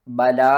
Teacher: با زبر با، لام الف مد زبر لا. بلا، اس کو ہم نے 5 الف کے برابر کھینچنا ہے